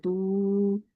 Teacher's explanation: आपने यहाँ पर एक वाव ऐड कर दिया, जब खींच दिया थोड़ा सा तो आपने एक वाव ऐड कर दिया